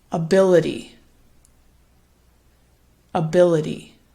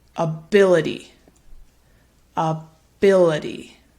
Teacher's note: so you can see it gets a bit louder and longer on that second syllable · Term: primary stress